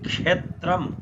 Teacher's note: अब हेर्नुहोस्, प्राय हामीले उच्चारण गर्दाखेरि क्षेत्रम भन्छु, क्षेत्रम होइन, च छको छ होइन नि, यो क र अनि मूर्धन्य शको संयोगले बनिन्छ क्ष, क्षत्रियको क्ष, छत्रीको छ होइन, क्षत्रियको छ।